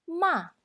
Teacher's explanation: when a car goes down from the top of the hill we call it tone 4 or say falling tone